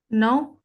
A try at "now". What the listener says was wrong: Almost there, but more on the stress. On the word O. Please stress more. Wait, can you make the O become A? Now. Now. So that's the pronunciation. So we say now.